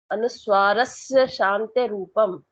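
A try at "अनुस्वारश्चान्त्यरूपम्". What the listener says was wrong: अनुस्वारस्य नहीं या नहीं है, अनुस्वारस के बाद या नहीं है, अनुस्वारस चांत्य रूपम, या तो पूरा एक साथ बोलने की कोशिश करो। देखो अनुस्वारस चांत्य रूपम, अलग अलग एक एक अक्षर पढ़ के देखो आप।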